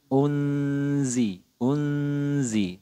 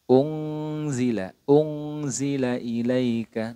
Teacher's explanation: lebih detailnya lagi ini termasuk dalam kategori ikhfa ausat yaitu pertengahan jadi bunyi samarnya itu sudah mulai masuk ke huruf tersebut gitu jadi ketika nunnya ini disamarkan ke huruf Zai jadi bunyinya udah ke makhrajnya Zai